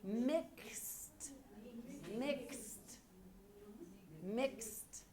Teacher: It sounds like a K-S-T. And we pronounce all of those.